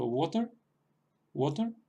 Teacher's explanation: no estamos pronunciando ninguna otra vocal al terminar la palabra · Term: erre vocálica